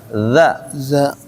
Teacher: Coba za-nya kalau ada z sedikit. Za ujung lidah tempel ke ujung gigi seri atas.